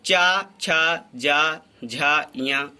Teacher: इनका उच्चारण स्थान तालु होता है और इन्हें तालव्य की संज्ञा दी जाती है। इन वर्णों का उच्चारण स्थान जहाँ से होता है उसे हम तालु कहते हैं और इन वर्णों को तालव्य की संज्ञा दी जाती है।